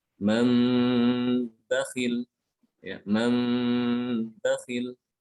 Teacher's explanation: Maka dikatakan nunnya itu diubah menjadi mim. Nun sukunnya itu berganti menjadi mim yang diikhfakan, disertai dengan gunah secara sempurna. Ya, jadi dibacanya dengan gunah ditahan. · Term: iqlab